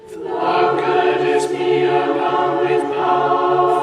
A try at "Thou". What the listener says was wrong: Thou should rhyme with power. Thou, not thou.